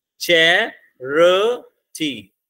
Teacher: चैरिटी में भी तीन है, आप देख लो सिलेबल बोल के देख लो, चैरिटी तीन है, तो उसमें भी स्ट्रेस कहां लग रही है, पहले पे, र हमारा अनस्ट्रेस्ड है, टी हमारा अनस्ट्रेस्ड है